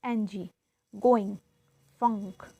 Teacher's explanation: So this ang is showing in this nasal, which is oral passage is blocked by pressing the back of your tongue against the soft palate. That is velar